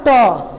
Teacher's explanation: আমাদের জিহ্বার একেবারে নরম অংশ অগ্রভাগ, আমাদের দাঁতের মাড়ি দিয়ে ঢাকা যে শক্ত অংশটি রয়েছে পিছনের, সেই অংশকে স্পর্শ করার ফলে এই পাঁচটি বর্ণ উচ্চারিত হয়, আর ঠিক ওই জায়গাটিকে বলা হয় মূর্ধা। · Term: মূর্ধন্য